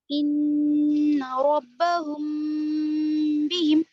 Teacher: देखिए इख्फाए शफवी, इन रब्बहुम बिहिम, यहाँ पर देखिए रब्बहुम बिहिम में देखिए हाँ मीम पे हुम है, मीम साकिन है, बिहिम का बा है बाजेर, तो मीम साकिन के बाद यहाँ पर बा आ गया, तो हम यहाँ पर नाक में ले जाकर पढ़ेंगे आवाज को मीम की